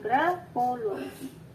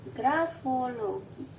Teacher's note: Puncak bunyinya ada di bunyi a, o lagi, dan i. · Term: puncak-puncak bunyi